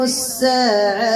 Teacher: هذيك التاء مربوطة أو الهاء المربوطة نوقف عليها، هاء ساكنة نجيب الهمس